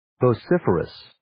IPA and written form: voʊ'sɪfərəs (Vociferous)